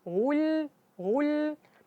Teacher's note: jadi terasa bahwa lamnya lebih tipis